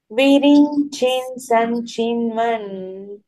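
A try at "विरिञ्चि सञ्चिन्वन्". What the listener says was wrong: ఒక్క నిమిషం, ఇక్కడ విరించి సంచిన్వన్, విరించిన్ సంచిన్వన్ కాదు, విరించి సంచిన్వన్. ఎస్, విరించి సంచిన్వన్ వేరు. కలిపి చదివేటప్పుడు చాలా మటుకు విరించిన్ అని నకారం వచ్చేస్తుంది, నకారం పలకూడదు. విరించి సంచిన్వన్ ఆ రెండు కలిపి కొంచెం స్ట్రెస్ ఇస్తూ, ఎందుకంటే విరించిహి అన్నమాట అక్కడ విసర్గ. విరించిహి సంచిన్వన్.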